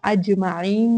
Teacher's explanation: اج میں ہم کلکلا کریں گے کیونکہ حروف کلکلا ہے، جیم اس میں آواز باؤنس بیک ہوگی